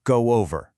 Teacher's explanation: If a word ends in a sound like o or oo, like the word go, we sneak in a little w sound to connect it. So go over becomes go over.